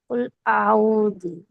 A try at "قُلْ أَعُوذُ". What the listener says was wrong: இப்ப ஊதுன்னு தான் வரீங்க. பிழை.